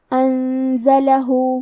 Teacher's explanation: ہم نون ساکن کو چھپاتے ہوئے اور غنہ کے ساتھ یہ حکم کو ادا کریں گے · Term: اخفاء